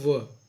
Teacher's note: दांत और ओष्ठ दोनों से उच्चारित होने वाले व्यंजन को हम क्या कहते हैं? दंतोष्ठ व्यंजन कहते हैं।